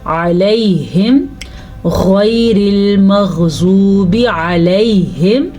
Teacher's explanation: یا ساکن سے پہلے زبر ہو تو وہ یا لین ہوتا ہے، اسے کھینچ کے بھی نہیں پڑھتے اور یہاں پہ رکتے بھی نہیں ہیں، تو ہم پڑھیں گے علیہم غیر المغضوب علیہم. · غین کو پر پڑھیں گے کیونکہ غین ہمیشہ ہی پر پڑھا جاتا ہے